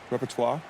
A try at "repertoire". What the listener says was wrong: You're forgetting the T.